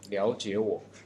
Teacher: remember that the first 2 words are transferred into tone 2